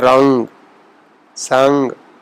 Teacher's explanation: جیسے ہم شیرین، تان، اون، این، تو یہ الفاظ جو ہیں فارسی میں چونکہ نون غنہ کی آواز موجود نہیں ہے، لیکن جو الفاظ ہیں گاف سے پہلے نون کا تلفظ اردو کے نون غنہ کی طرح ہی کیا جاتا ہے